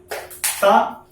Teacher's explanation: देखो जीभ कहां लड़ रही है, आगे आकर दांत में लड़ रही है तो इसको क्या बोलते हैं, दंत बोलते हैं।